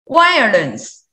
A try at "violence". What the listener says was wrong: And also have the same meaning, have the pronunciation issue on the consonant. Consonant V. Violence.